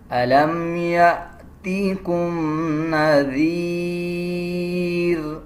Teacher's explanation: ذال تب ادا کیا جائے گا جب زبان کی نوک دونوں دانتوں کے درمیان ہم لے کے آئیں گے۔ جب وقف کریں گے تو را کو آدھا پڑھا جائے گا اور دونوں پیش کو سکپ کر دیں گے، جیسے الم یأتیکم نذیر۔